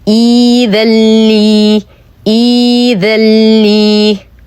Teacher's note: سنبتدئها بالكسر فتصبح إي، وسنحذف همزة القطع التي بعدها ونبدلها بماذا؟ بياء ساكنة فتصبح إي، يمد بمقدار حركتين لجميع القراء